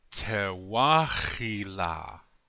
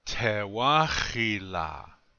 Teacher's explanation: the accent still stays on the second syllable even though that guttural H moved up a little bit yeah the accent stays on the second syllable in this word